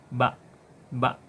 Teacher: bertemunya antara bibir atas dan bawah dengan sedikit menekan. Keluar darinya huruf ba.